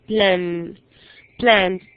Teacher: Termina en N, plan. Tiene vibración en la cuerda vocal.